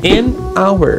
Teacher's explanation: apesar do H ser uma consoante, eu não pronuncio o H, ou seja, eu tenho um som de hour, mas realmente, na maioria das palavras, essa regra vai valer, então você pode afirmar, entre aspas, que A antes de consoantes e N antes de vogais, tá bom?